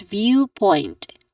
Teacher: All in all the word is viewpoint. Stress on the first